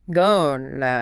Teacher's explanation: Going to, yeah. But for gonna, the word to completely disappears into the word going. It just becomes a soft, easy gonna.